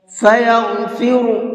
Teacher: یہاں پر یہ غین ہے، اس کو منہ بھر کے پڑھیں گے، اور اس را کو بھی منہ بھر کے پڑھیں گے۔